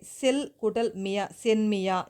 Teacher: அரை மாத்திரை அளவா குறைஞ்சு ஒலிக்குது அதே மாதிரி செல் கூட்டல் மியா சென்மியா இந்த இல் வந்து ன்னா மாறும்போது பின்னாடி மியா அப்படிங்கிற அசைச்சொல் வரும்போது அரை மாத்திரையா குறைஞ்சு ஒலிக்குது